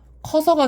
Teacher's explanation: 거기에 역시나 이것도 어서가 결합되면요, 앞에 있는 의와 뒤에 있는 어라는 모음이 중간에 자음이 없이 바로 만나게 되기 때문에 이 앞에 있는 의가 탈락해서 커서가 되는 거고요